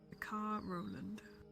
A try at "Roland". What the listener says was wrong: No D, just Roland.